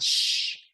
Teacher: So the SH sh is between your teeth where you're blowing air and it's a long sound.